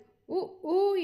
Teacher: உ ஊ என்பது இதழ்களை குவிப்பதால் பிறக்கின்றது